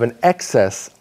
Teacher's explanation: the emphasis for the noun is on the first syllable